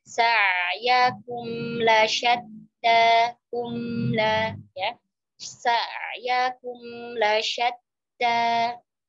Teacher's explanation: Kemudian ayat keempat, inna sa'yakum lasyatta, inna tashdid, ya, dua harakat gunnah, jadi tidak boleh terburu-buru. Kemudian sa'yakum antara ain sukun dengan mim sukun disamakan temponya, ya, karena sama-sama bain